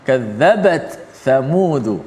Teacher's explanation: membaca secara izhar, iaitu ta tu dijelaskan mati, dibunyikan mati.